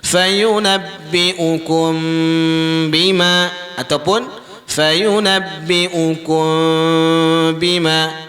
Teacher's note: Mim mati bertemu dengan huruf ba, iaitu ikhfa syafawi. Kita kena dengung.